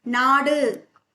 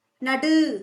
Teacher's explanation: நாடு இதுல உகரம் குறையும் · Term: குற்றியல் உகரம்